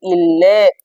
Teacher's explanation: மேல்வாயை நாக்கின் நுனி வருடுவதால் பிறப்பது இரு இல்லு. மேல்வாய் பல்லின் அடியை நாக்கின் ஓரங்கள் தடித்து நெருங்குவதால் பிறப்பது